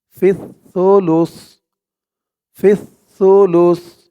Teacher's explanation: তাশদি ওয়ালা সা ধরবে ফা সা জের ফিস সা পেশ সু আওয়াজটা একদম নরম পাতলা হবে জিহ্বার মাথা উপরের দাঁতের মাথার সাথে লাগবে